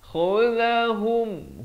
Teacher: Khudhahum, hum bukan hum tapi hum. Ha baris dhammah bunyi hu, bukan bunyi ho.